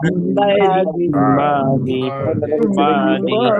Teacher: নুন সাকিনের পরে ইকলাবের অক্ষর বা এক কথায় বা আসলে কি করব, আমরা এই ছোট্ট মিম দ্বারা পরিবর্তন করে পড়বো।